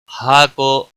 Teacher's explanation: ہا الف مدہ ہے، 1 الف کے برابر کھینچ کر پڑھیں گے وقف کی صورت میں